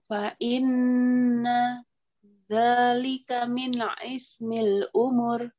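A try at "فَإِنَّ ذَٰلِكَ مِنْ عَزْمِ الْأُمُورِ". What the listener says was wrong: Oke, ini azmil kayaknya ya, bukan ismil. Zalika, zalnya panjang, Ustaz. Fa inna dzalika min azmil umur, coba.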